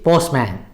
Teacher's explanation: in the word postman, here again the T is not pronounced, it is postman.